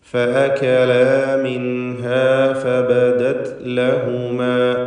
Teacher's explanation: മിൻഹ എന്ന പദത്തിലെ സാക്കിനത്തായ നൂനിന് ഇൽഹാർ ഹൽക്കി നൽകി മണിക്കാതെ വെളിവാക്കേണ്ടതാണ്. · ഇവിടെ എല്ലാ ഹർഫുകളും ഇസ്തിഫാലിൻ്റെ ഹർഫുകളാകയാൽ തർക്കീഖ് ചെയ്തുകൊണ്ടാണ് ഉച്ചരിക്കേണ്ടത്. ഒന്നിനും തഫ്ഖീം വരുന്നില്ല എന്നത് ശ്രദ്ധേയമാണ്.